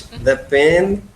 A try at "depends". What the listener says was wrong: Depends. With the S. It depends. With a S.